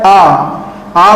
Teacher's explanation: आ बोलेंगे तो पूरा मुंह अपना खुला हुआ रहता है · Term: विवृत स्वर